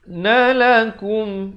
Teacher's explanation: idhar syafawi, sempurnakan saja bunyi mim matinya.